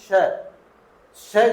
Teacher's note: श जो है मुर्धन्य है अघोष है लेकिन अल्प प्राण नहीं है